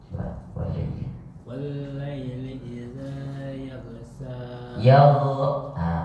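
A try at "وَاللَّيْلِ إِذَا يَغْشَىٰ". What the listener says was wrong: Panjangin sedikit. Yaghsha.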